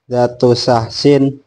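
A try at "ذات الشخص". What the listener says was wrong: Zatus saksi, zatus jangan zatu. Karena itu ada alnya, zatus saksi.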